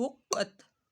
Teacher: حق ہا قاف پیش حق قاف تا زبر قت حقت حقت قاف حروف مستعلیہ میں سے اس کو موٹا پڑھنا ہے